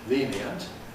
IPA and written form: ˈliːniənt (lenient)